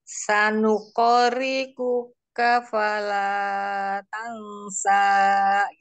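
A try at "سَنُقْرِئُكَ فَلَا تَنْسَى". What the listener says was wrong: Jangan panjang-panjang juga, tapi hanya dua harokat. Yang di la pertamanya. Dua harokat saja. Utinya ragu-ragu ngebacanya. Gak pede.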